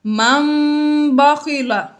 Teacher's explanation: نون ساکن کو میم سے بدل کر اخفا کریں گے، یعنی غنہ کر کے پڑھیں گے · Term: اقلاب